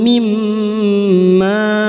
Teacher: mim yang bertasdid gunnah musyaddadah kita dengungkan selama 3 harokat. Mimma, ma bertemunya mat dengan hamzah di lain kalimat mad jaiz munfasil.